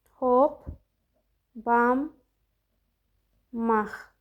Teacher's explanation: sondakı Q da X kimi tələffüz olundu. · N samitindən sonra M samiti gələndə N da M çevrilir. Baxın burdakı N da Maya çevrildi.